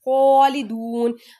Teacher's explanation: واو مدہ، واو مدہ کے بعد عارضی سکون، یہاں پہ مد عارض ہو رہی ہے